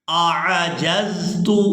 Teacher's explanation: یہاں پر حمزہ اور عین ایک ہی جگہ پر ہے، دونوں میں فرق کر کے ادا کریں گے